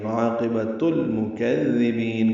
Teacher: عاقبۃ المکذبین، با کو لمبا کریں گے اور نون ساکن پہ وقفاً اظہار ہوگا، مد عارض سکون ہوگی